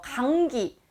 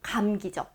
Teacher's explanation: 이 미음이 뒤에 있는 기역의 영향을 받아서 이응으로 처리가 되는 거